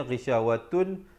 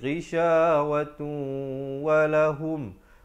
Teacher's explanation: Asalnya ghisyawatun, tapi bila datang waw jadi ghisyawatu walahum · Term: idgham bi gunnah